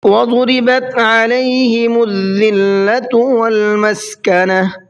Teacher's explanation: وضربت کے ضاد کو منہ بھر کے پڑھنا ہے